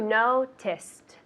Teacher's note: But the ed at the end isn't a syllable.